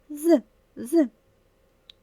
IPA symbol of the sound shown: з